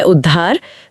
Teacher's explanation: उत प्लस हार में त तो द बनता ही है। वो ह को भी बदलकर ध बना देता है और दोनों मिलकर ध बनाते हैं।